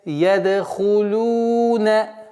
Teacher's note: Лам и дамму. Дамму протягиваем в размере 2 огласовок, так как здесь, естественно, удлинение.